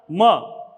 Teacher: अंतिम प वर्ग का पांचवा वर्ण म, ये ओष्ठ से बोला जाता है। प वर्ग हमेशा ओष्ठ से बोला जाता है, इसलिए इसका उच्चारण स्थान भी ओष्ठ है।